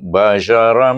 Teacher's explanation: mim itu bertasydid di sana sebab dia baca dengan dengung. Dah idgham dengan dengung.